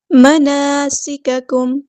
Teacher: سین کی سیٹی ہمیں واضح ادا کرنی ہے